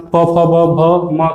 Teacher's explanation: प, फ, ब, भ, म का उच्चारण ओठ से होता है